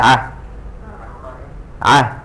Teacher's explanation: The ain comes from a place which is in the middle of the throat.